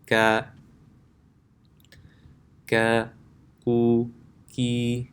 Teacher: kaf is not full mouth, so you can keep your tongue at the bottom of your mouth · Next is kaf. So the makhraj of kaf is when the back of the tongue touches the palate. So remember, the difference is not as far back as qaf.